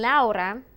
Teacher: if there's one single r as in laura then you do not have to roll the r